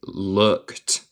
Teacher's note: No se dice ed aquí, se dice looked. Como ed es un T.